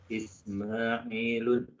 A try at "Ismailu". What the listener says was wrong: Keliru Pak. Bukan Ismailun. Ya. Tapi Ismailu.